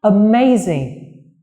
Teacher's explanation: amazing. Trọng âm của từ này rơi vào âm tiết thứ 2